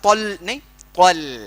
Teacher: طا موٹا ہے, ال پتلا ہے, تو موٹے سے پتلے میں ٹرانسفارم ہونا ہے ہمارے کو